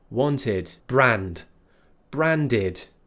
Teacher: what we actually do is we use ID instead wanted now remember it's an i sound not an e sound